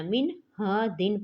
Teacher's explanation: نون ساکن کے بعد کیا آ رہا ہے؟ ہا، تو اس میں ہم نے غنہ نہیں کرنا۔